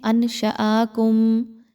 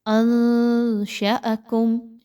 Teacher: اب اس کو لوگ پڑھتے ہیں انشأکم، یہ غلط انداز ہے۔ نون ساکن کے بعد شین کا حرف ہے جو کہ حروف اخفا میں سے ہے۔ آپ نے یہاں پہ نون کی آواز کو کلیئر نہیں پڑھنا۔